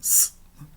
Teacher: o ar é projetado passando pela superfície da língua e indo em direção aos dentes. E esse som é o som de um s, né? · E ele é sempre surdo em grego, sempre s e nunca z. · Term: sibilante